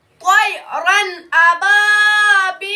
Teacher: تنوین و نون ساکن کی آواز کو خوب ظاہر کر کے بلا غنہ کے جلد پڑھیں گے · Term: اظہار حلقی